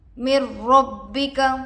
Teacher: نون پر جزم ہے، نون ساکن ہوگا۔ نون ساکن کے بعد حروف ادغام میں سے را آ کر ہے، اس لیے بغیر غنہ کے ملا کر پڑھیں گے۔ اس کو ادغام بلا غنہ اور ادغام تام بھی کہا جاتا ہے۔